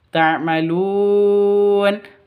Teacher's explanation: Tum ta'malun, mimnya jelas, taknya juga jelas. Ta'malun, panjang boleh 2, boleh 4, boleh 6 ketukan karena bacaan mad arid lis sukun